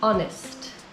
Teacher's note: The word honest starts with a consonant, H, but it doesn't sound like it. The H is silent, and so the first sound of the word is a vowel, honest. Because it sounds like it starts with a vowel, we use an.